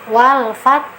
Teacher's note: Syiddah itu artinya kuat, tertahan dia. Jadi saat pengucapan fat kita tahan dulu sesuai dengan makhraj ta. Wal fat, baru dihamskan, dikeluarkan anginnya wal fat.